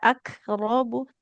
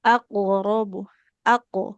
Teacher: Tidak akrobu tapi aqrobu aq. Tebalkan dia hurufnya dan pantulkan karena termasuk huruf yang qalqalah, huruf-huruf yang ketika sukun memantul.